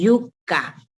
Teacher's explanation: la parte media del dorso de la lengua se pone en contacto con el paladar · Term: palatales